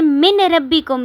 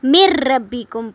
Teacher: اسی طرح را آ جائے اگر نون ساکن کے بعد تو نون کو سکپ کر کے پچھلے حرف کو را کے ساتھ ملا لیں گے، جیسے میم را زیر، مر را زبر با رب، مر رب با زیر بی، مر ربی کاف پیش میم کم، مر ربی کم۔